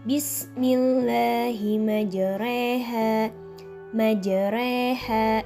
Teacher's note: memiringkan Bunyi harakat fathah ke bumi harokat kasrah atau membengkokkan Alif ke arah huruf ya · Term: imalah